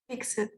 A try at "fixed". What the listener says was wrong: No, that's not fixed. Acuérdense que tiene sonido ¿de qué tiene sonido de finalización? De T. Sería fixed. Fixed.